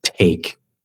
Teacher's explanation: Es como una gran diferencia entre la T en español y la T en inglés. Es que la T en inglés es alveolar. ¿Qué quiere decir eso? Que la lengua toca el cielo de la boca, como detrás de los dientes.